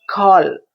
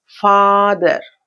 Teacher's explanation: ఇక్కడ కాల్ అన్నప్పుడు lips half రౌండ్లో ఉంటాయి, ఇక్కడ కంప్లీట్ ఓపెన్ లిప్స్